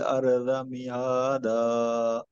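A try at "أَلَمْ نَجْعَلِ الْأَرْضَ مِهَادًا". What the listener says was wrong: మధ్య మధ్యలో మీరు గ్యాప్ ఎక్కువ ఇస్తున్నారు, దీర్ఘం తీస్తున్నారు, అలా తీయకూడదు. మీమ్ సాకిన తర్వాత ఏమీ దీర్ఘం లేదు, అలాగే లామ్ కసరా తీసుకెళ్ళి లామ్ కలిపినప్పుడు కూడా దీర్ఘం లేదు.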